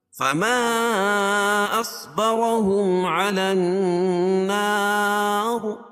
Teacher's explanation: قاعدہ کہ حروف مدہ کے بعد حمزہ جو ہے دوسرے کلمے میں ہو تو مد منفصل ہوتا ہے۔ صاد کو پر پڑھیں گے اور را پر پڑھی جائے گی۔